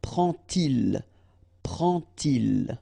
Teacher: you won't pronounce it like d to make the liaison, but you will pronounce it like t. And so you will get prend-il, prend-il, okay?